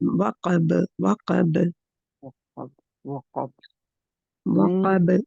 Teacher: बा के ऊपर कलकला होगा, ठीक है, बा के ऊपर रुकेंगे, बा कलकला लेटर है